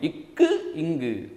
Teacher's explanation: நீங்க அழுத்தி சொல்லி பாத்தீங்கன்னா நம்மளால உணர முடியும். இக்கு இங்கு நாவின் முதற பகுதி அன்னத்தின் அடிப்பகுதி